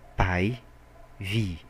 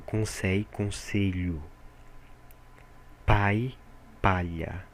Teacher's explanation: se trata de um som que é o l não é pronunciado e sim vira uma semivogal